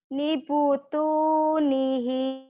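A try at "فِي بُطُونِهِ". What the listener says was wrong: Bukan ni, ini fi. Fi butuni. Fi butunihi. Fi butunihi.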